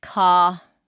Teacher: In most British accents, the R at the end of words isn't pronounced.